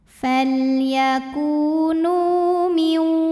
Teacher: Karena ada waw sukun yang sebelumnya baris dhammah, maka huruf nun kita panjangkan 2 harokat. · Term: mad tabi'i dhahiri